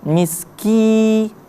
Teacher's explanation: ki-nya dibaca panjang karena mad tabi'i, ada ya mati sebelumnya berbaris kasra